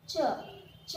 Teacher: च के लिए भी ज्यादा समय नहीं लगता, तो च भी है अल्पप्राण।